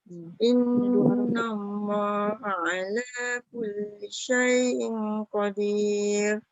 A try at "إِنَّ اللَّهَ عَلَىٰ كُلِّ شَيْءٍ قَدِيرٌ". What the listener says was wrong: Syai'in qadir. Dengung dah ada tapi tak cukup 2 harakat.